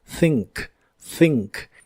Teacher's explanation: La th de este verbo es la thua suave de inglés y se pronuncia soplando entre la punta de tu lengua y tus dientes de arriba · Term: th suave, TH suave